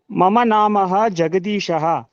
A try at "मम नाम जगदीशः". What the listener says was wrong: Mama nama. After nama, Visarga is not there. Mama nama. That's all.